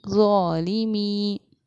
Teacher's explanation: इस हुरूफ मद्दा को 2.5 अलिफ के बराबर खींच कर पढ़ना चाहिए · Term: मद मुनफ़स्सिल